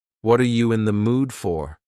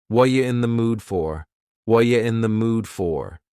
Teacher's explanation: The word are is gone, and the word you has been reduced to ya. So when we link together, what and you, super fast. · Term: reduction